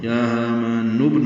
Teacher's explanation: کو 2 حرکات لمبا کرنا ہے، ہا سہلک سے نکالنا ہے، نون کی پیش کو ابن کے با سے ملا دیں گے تو یا ہامان نبن ہو جائے گا ، با ساکن پہ قلقلہ ہے، نون کے نیچے زیر جلدی